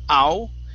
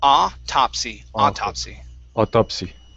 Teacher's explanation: instead of au, it's only an ah there at the beginning